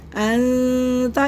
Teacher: यानी कि अधूरे गुने की आवाज आएगी अनता इसको अन नहीं पढ़ना ना अंता पढ़ना है ये दोनों गलतियां होती है और उसको बिल्कुल चेक करके पढ़ना होता है अनता यानी कि हमारी जुबान दरमियान में रहेगी ना ऊपर चिपकेगी और ना ही हमारी जबान हम ना इज़हार करेंगे। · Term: अधूरी आवाज